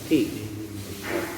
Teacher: huruf ta ini kita keluarkan sifat hamsnya, ada keluar angin. Ti. Ti-nya hanya 2 harokat saja mutabi'i.